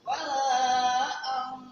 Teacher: Maka dibaca apa tadi yang di atas? Ikhfa hakiki, yaitu suara nun mati diganti dengan suara ang.